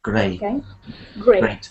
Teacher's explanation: You don't need a T sound, but you really need an A sound.